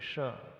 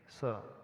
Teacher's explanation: है संतम अब श्र बोलेंगे तो एक सीटीसी की आवाज आएगी तालव्य श में शक्कर के श में एक सीटीसी की ध्वनि से निकलती है श ऐसा लग रहा सीटीसी बज रही हो और दंती स